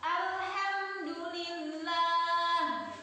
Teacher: Jangan mantul ya, karena lamnya bukan huruf qalqalah. Jangan alhamdu, itu nggak boleh.